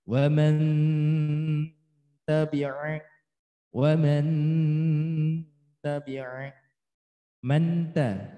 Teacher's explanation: Nunnya sudah mendekati ta dan memang dekatnya dengan suara idhar. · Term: akrob